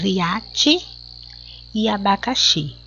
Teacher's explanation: As duas sílabas tônicas, a sílaba mais forte é a última.